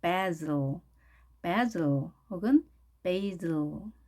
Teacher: baz 혹은 에 대신에 a 이렇게 발음을 했네요. 강세는 앞에 a에 있겠습니다. a에 있습니다. 따라서 basil 혹은 basil 이렇게 발음하네요.